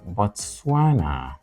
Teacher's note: there are three syllables and the word is stressed on the second syllable